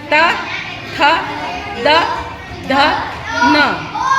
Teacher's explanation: अपनी जिह्वा है जो जीभ है वो दांतों को टच होती स्पर्श करती है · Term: दंत ध्वनि